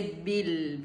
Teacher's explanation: There's no jerk, there's no kalkla, so don't jerk, just say bil.